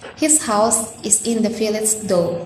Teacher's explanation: There is the repetition of the voiceless, glottal fricative consonant sound H in the words his and house in the second line.